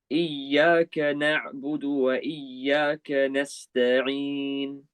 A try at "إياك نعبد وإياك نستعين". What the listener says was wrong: I feel like there's a bit of ya and not ya. Repeat again, please.